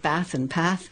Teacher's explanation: I certainly spoke with short A's. I said bath and path, and I certainly flattened the vowel.